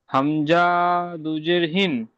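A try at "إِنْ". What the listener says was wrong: হামজা টান হয় না, হামজা। ইন। ইয়া দু যাওয়ার যখন থাকতো তখন ইয়ান হতো, ইয়া দুজের ইন।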